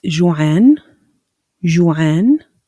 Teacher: when you pronounce the ain, it comes from the throat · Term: ain sound